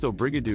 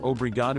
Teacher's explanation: In Brazil, you'll hear obrigado with open, elongated vowels.